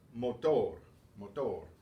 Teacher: So the stress will be on the final syllable.